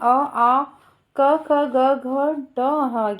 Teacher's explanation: कंठ से उच्चारण होने वाली सभी ध्वनियां हैं